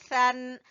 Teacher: सा का मखरज जबान की नोक को सामने वाले दो दांतों के सिरे से लगाएंगे तो सा अदा होगा